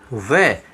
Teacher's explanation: तो यहाँ एक है दंत और एक है ओष्ठ, ये दोनों मिलकर के किसका निर्माण करते हैं, वै का निर्माण करते हैं। जब हम वै का उच्चारण करते हैं तो दांत और ओष्ठ हमारे आपस में काम करते हैं, दोनों ही काम में आते हैं। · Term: दंतोष्ठ